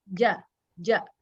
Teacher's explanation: huruf Jim ini sifatnya joher joher tuh maksudnya Eh ini ya tidak ada hembusan nafas jadi enggak ada ilmu sana pas dia nempel di langit-langit ja